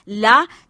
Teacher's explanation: निश्वास जो है वह दोनों पार्श्व से बाहर निकलती है यानी हमारी जीवा के जो दोनों बगल के हिस्से हैं उनसे वायु बाहर निकलती है और इसमें ला ध्वनि का उच्चारण होता है सिर्फ एक ध्वनि · इसमें जीभ की नोक मुर्दा को छूती है मुर्दा यही दन पंक्तियों का जो पास का भाग होता है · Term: पार्श्विक ध्वनि